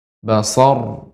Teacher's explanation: karena waqaf sebelumnya fathah dibaca dengan tebal